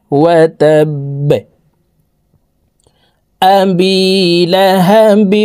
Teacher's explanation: লাহাবিউ, ওয়াও জবর ওয়া, তা বা জবর তাব, বা জবর বা, ওয়া তাব, বাকে ওয়াকফের ক্ষেত্রে সাকিন করে ফেলবো। বা যেহেতু কলকলার হরফ, নিচের দিকে ধাবিত করে ধাক্কা দিয়ে সাকিন করতে হবে।